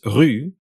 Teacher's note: if you take for instance the tongue position of E and round your lips you'll get U